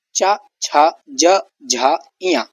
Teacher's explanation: जैसे च, छ, ज, झ, इया, ये तालव्य वर्ग है, इनको तालु से बोला जाता है। जबान तालु से टकराते हुए ध्वनि निकालती है जब इन वर्णों का उच्चारण करते हैं। जैसे तालु से टकराकर ध्वनि निकलती है, मधुर ध्वनियां होती हैं।